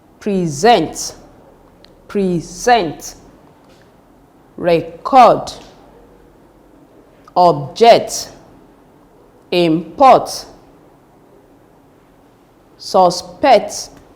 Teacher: All these are examples of verbs with two-syllable words and they are stressed on the second syllable